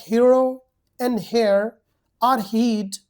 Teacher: The last approximates and the last consonant over this series is H as the letter but the sound it is pronounced as H as if only a breath